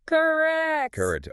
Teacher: And the emphasis, the stress, the louder part is on that second sound, rect.